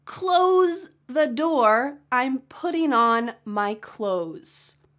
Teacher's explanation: Yes, there is a TH, but in fast English conversation, we're gonna just forget about the TH.